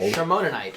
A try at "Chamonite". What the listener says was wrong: Look, that's a CH. I always pronounce that as more like the K.